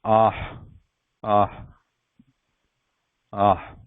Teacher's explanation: So no vibration here. Unvoiced breath following a vowel. So it is just a light breath. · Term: Visarga